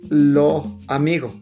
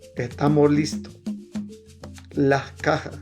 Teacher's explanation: Consiste en que la S al final de la sílaba o palabra se pronuncia suavemente como una H aspirada o desaparece completamente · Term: aspiración o pérdida de la S